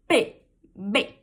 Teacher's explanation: Elas fecham na sua boca e é como se elas explodissem, como se o ar passasse por um obstáculo e explodisse, assim, ó. P, B. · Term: oclusivas bilabiais